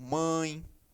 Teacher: o nasal é aquele ditongo mais digamos assim fechado onde o som sai mais pelo nariz